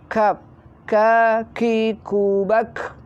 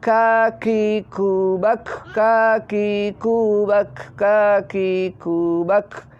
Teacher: Kaf mempunyai sifat hamas juga, mempunyai sifat mengeluarkan angin, hamas.